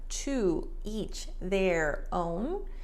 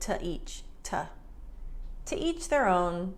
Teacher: Americans tend to reduce the to. So instead of to each, it sounds like to each, to.